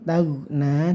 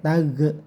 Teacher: tagna jangan sampai tag ya, karena ini bukan qalqalah